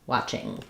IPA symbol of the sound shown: ŋ